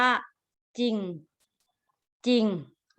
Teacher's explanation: ไม่มีเสียงรอแต่เขียนเวลาเราเขียนมีตัวรอแต่ออกเสียงไม่มีรอ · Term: คำควบกล้ำไม่แท้